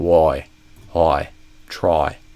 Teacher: Then if you have someone from Australia, their price instead of I or a might be something kind of like oi.